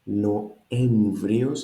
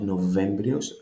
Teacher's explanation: The V is lost, not Novembrios, Noemvrios.